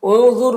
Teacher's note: انظر، نون میں اخفا ہو رہا، نون کی آواز کو ناک میں چھپا کر پڑھیں گے